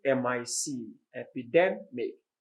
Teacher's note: the stress is on the second syllable, middle syllable there.